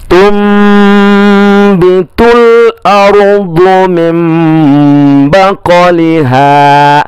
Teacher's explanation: Iqlab hurufnya hanya satu, yaitu ketika ada nun sukun atau tanwin bertemu dengan huruf ba. Ya, bunyi n-nya, nun sukunnya atau tanwinnya yang berbunyi n dirubah menjadi m